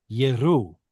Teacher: So this should have been two syllables, but the aleph here has quiesced, and now we just basically have yeru. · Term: quiesced aleph